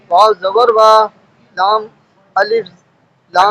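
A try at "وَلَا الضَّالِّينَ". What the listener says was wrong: الف نہیں پڑھا جائے گا. لام ضاد سے ڈائریکٹ ملے گا. ضاد الف لام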